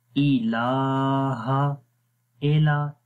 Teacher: اے نہیں پڑھنا، ای پڑھتے ہیں، ای لمبا بھی نہیں کرنا، ٹھیک ہے۔ الہ، ال حمزہ کو لام کے ساتھ ملائیں گے، ال، اینڈ پھر آگے لام کو آگے والے لام کے ساتھ ملائیں گے کیونکہ اس کے اوپر جزم شد کا سائن ہے، تو جب شد کا سائن آتا ہے تو پھر ہم آپس میں ملاتے ہیں۔